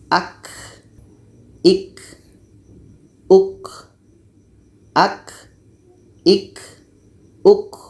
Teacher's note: letaknya pada pangkal lidah menempel dengan langit-langit atas